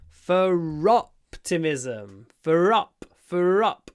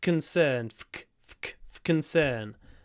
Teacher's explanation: for optimism, we do pronounce the r because it comes before a vowel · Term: the r is pronounced